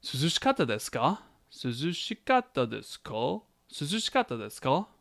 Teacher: Was it cool outside, brah? I noticed the ka, rising intonation, brings it into a question